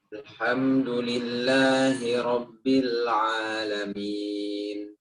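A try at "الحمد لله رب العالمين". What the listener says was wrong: Paksa lagi. Ba'anya dikeluarkan. Ba'anya. Rabbil coba.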